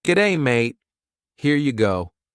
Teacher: kind of going up at the end of a sentence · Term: Rising intonation